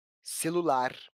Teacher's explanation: ela é uma palavra oxítona isso porque a última sílaba a sílaba mais forte a sílaba tônica · Isso porque a última sílaba é a sílaba mais forte, a sílaba tônica. Se pronunciarmos essa palavra em voz alta, vamos perceber que a sílaba lar aparece com mais clareza, celular.